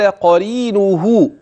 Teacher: القاف مره ثانيه تفخم بمرتبه اقل ثم الراء ترقق لكسرها · قال ق: واحرص على سماع وصل الكلمة بما بعدها، فذاك هو المعني. قال قرينه، القاف مرة ثانية تفخم بمرتبة أقل، ثم الراء ترقق لكسرها